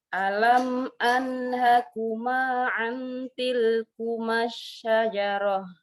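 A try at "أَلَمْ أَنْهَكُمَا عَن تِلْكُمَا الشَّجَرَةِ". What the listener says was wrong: Ini bagus, cuman saking kita izhar terus nun sukun ketemu tanya izhar juga nih. Dengungnya kurang. Ini ikhfa ini.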